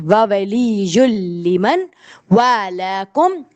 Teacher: اب جہاں بھی تنوین کے بعد یا نون ساکنہ کے بعد لام آتا ہے آپ نون کے ساؤنڈ کو اسکپ کرتے ہیں, لام پر آپ تشدید لگاتے ہیں.